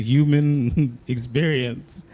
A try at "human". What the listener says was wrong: Nigga, did you just like not pronounce the H in human on purpose to sound more profound?